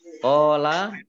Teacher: Kadzalika zal fathah berdiri mat tabi'i qala qaf fathah alif mat tabi'i masing-masing dibaca panjang 2 harokat